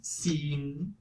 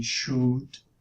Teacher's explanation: Alright, and then we can just change the specification for labial action. So when I go to the front and high, that's an E, but if I round my lips, then I get U.